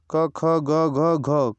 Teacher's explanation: क वर्ग क ख ग घ घ कंठ से बोले जाने वाली धुनिया है